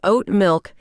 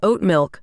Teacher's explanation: oat milk with the emphasis on the second word